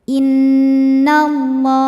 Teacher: Lam pada lafaz Allah atau lam jalalah dibunyikan secara tafkhim karena huruf sebelumnya berbaris fathah, maka dibacanya tebal. Innallah. Alif lamnya dinamakan dengan alif lam syamsiyah karena alif lam menghadapi huruf syamsiyah yaitu lam, maka alif lam tidak kita baca.